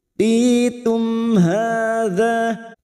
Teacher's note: Uti tu mim sukun bertemu ha, mim sukun bertemu ha idhar safawi, mim sukun dibaca jelas tanpa mendengung